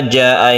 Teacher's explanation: mad wajib muttasil dengan lima harokat atau 5 ketukan atau dua setengah Alif